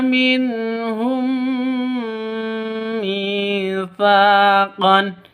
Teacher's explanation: Di sini ada mim mati bertemu dengan mim. Cara bacanya masuk ke mim yang kedua disertai dengung dua ketukan · Mi panjang dua ketukan karena ada ya mati diawali dengan kasrah. Masaqon tsa panjang dua ketukan. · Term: idgham mimi, mad asli